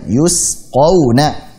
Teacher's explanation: Jangan sampai yuskawna. Jangan sampai pakai kaf. Tapi yusqawna.